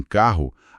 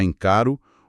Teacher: Em carro, a gente pronuncia dois sons de R. Um que fecha a primeira sílaba e outro que abre a segunda. Já encaro o R é um som só.